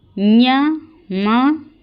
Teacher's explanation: ये नासिका से उत्पन्न होने वाले वर्ण है